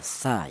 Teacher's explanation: berasal dari ujung lidah menyentuh ujung gigi seri atas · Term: huruf tsa